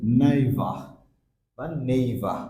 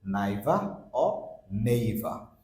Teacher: দুইভাবে উচ্চারণ হয়, বাট আর এর সাউন্ড উচ্চারণ হচ্ছে না